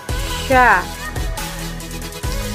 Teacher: Huruf sya keluar menyentuh tengah lidah dengan langit-langit, diucapkan mengalir udaranya dan nafasnya. Bahkan ketika melafalkannya, menghela napas dan udaranya yang disebut dengan tafashi.